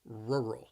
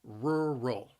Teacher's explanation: The word has 2 syllables, and the stress is on that first syllable